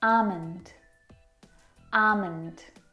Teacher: Now in this word, the L is silent.